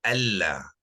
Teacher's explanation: Nun tak ada lagi disebut, kita terus pergi ke lam.